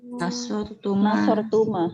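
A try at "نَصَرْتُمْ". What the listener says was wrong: nasortum, betul. Ya betul, nasortum.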